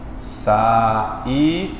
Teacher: Na palavra saída, você separou o I do A porque o acento recaiu sobre a segunda. Você note que o I aqui é a segunda vogal desse hiato.